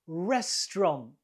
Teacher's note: 2 syllables. The stress is on the first one.